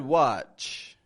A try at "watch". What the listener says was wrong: A little more of a stop there. Watch. As if it's like a T, but